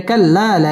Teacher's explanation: জবরের বাম পাশে খালি আলিফ মদের হরফ এক আলিফ টেনে পড়তে হবে